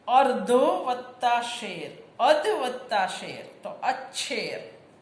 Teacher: 9મો નિયમ, અનુનાસિક સિવાયના કોઈ પણ સ્પર્શ વ્યંજન પછી જો શકોરાનો મીંડાવળો તમે લોકો કહો છો આવે તો શનો છ થાય છે, છત્રીનો છ. અનુનાસિક સિવાયના કોઈ પણ સ્પર્શ વ્યંજન પછી જો શ આવે તો એ શનો છ થાય. સંસ્કૃતમાં આ નિયમ વૈકલ્પિક છે, પરંતુ ગુજરાતીમાં છ વાળું રૂપ વપરાય છે.